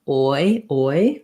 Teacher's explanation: We're just gliding from a rounded back vowel to a high front vowel. I often think about it as sounding more like an O and an E, oi, oi, but ah is how it is shown in the dictionary. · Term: oi diphthong